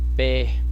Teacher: Você não falou nasalado, você não pode falar nasalado. Pé. Você tem que falar pé. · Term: aberto